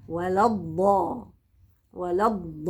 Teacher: وادخل على الضاد المفخمه بدون همس